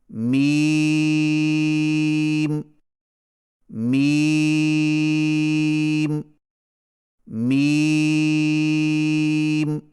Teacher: میم کی ادائیگی میں ہونٹوں کے خشک حصے کو قدر نرمی سے ملا کر باریک آواز میں پڑھیں، یعنی میم میم میم۔